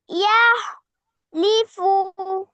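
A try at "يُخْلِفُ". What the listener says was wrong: না, ইয়া পেশ আছে। ইখ ইখলিফু ইখলিফু খ খ ইখ ইখলিফু।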